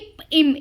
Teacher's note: மேல் இதழும் பார்த்தோன்னா 2 இதழும் வந்து பொருந்துறதுனால இப் இம்